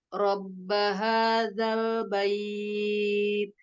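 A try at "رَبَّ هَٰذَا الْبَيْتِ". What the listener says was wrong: Ba-nya lebih. Ini kurang lunak. Bait. Jadi ba itu tidak boleh jadi kayak a ke e ya. Bayi. Karena kita ba-nya udah mau siap-siap ke ya nih. Jadinya ba-nya nggak ba.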